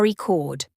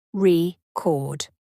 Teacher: when the stress is on the first syllable AR record but it's a verb when the stress is on the second syllable